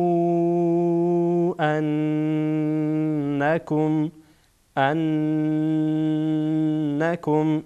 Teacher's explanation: نون از کجا ادا میشد قسمت جلوی زبان برخورد میکنه و بی خد اندان های پیشینی که در بالا قرار داره